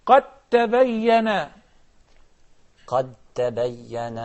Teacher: So we do not pronounce the dal at all · The dal followed by the ta. Yes, they have the same articulation point, but they are not identical. But since the first one is a non-vowel letter, and the second is a vowel letter, that's called صغير, and they will be merged.